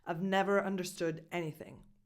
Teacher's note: Never is really strong, is really emphasized and stressed.